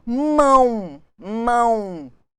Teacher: Mão, mão. Olha a sonoridade do U, representando o O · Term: ditongo nasal